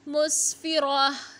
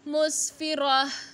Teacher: ता की जगह हा साकिन की आवाज़ निकालेंगे